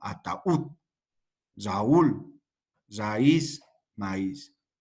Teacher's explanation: Supuestamente tendrían que ser diptongos, ¿no? Pero a causa de la vocal débil, que lleva el acento ortográfico, se corta y se divide en dos, ¿no? Ataúd, Raúl, raíz, maíz, ¿no? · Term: hiato